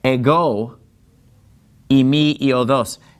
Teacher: the word ego, it gets the accent on the second syllable. See, that accent is over the omega.